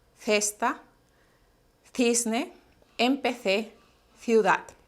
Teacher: van a tener que poner la lengua entre los dientes sí porque es un sonido link o interdental 13 cesta cisne